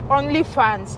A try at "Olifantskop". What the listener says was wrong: It's called Olifantskop. Olifantskop, not OnlyFans. She's saying OnlyFans. It's not OnlyFanskop. It's Olifantskop.